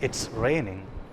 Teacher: the sentence has taken a falling tone